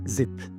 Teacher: Tongue tip against alveolar ridge, voiced and plus voice